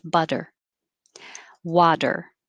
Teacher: it should be a very quick tap